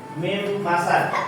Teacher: Huruf pertama huruf nun dimasukkan ke dalam huruf huruf mim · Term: idgam